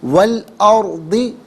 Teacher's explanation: واو پر زبر ہے، اس سے الارض کے لام ساکن کے ساتھ ملائیں گے، درمیان میں سے الف یعنی حمزہ کو حذف کیا جائے گا · ارضی میں را ساکن ہے، را ساکن ما قبل حرف پر زبر یا پیش ہو تو را ساکن کو پر پڑھتے ہیں ، زیر ہو تو باریک پڑھتے ہیں، یہاں پر کر کے